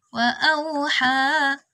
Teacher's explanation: Fathah berdiri, kita baca 2 harakat. Wa auha. Ha-nya segitu aja.